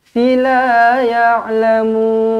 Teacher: Mad arid disukun di hujung ini. 2 atau 4 atau 6 harakat.